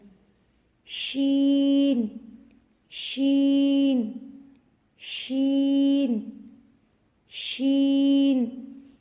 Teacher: شین کی ادائیگی میں زبان کے درمیان کو تالو کے ساتھ لگا کر باریک اور پھیلتی ہوئی آواز میں پڑھنا ہے. یعنی جب ہم شین پڑھیں گے تو آواز منہ میں پھیلے گی.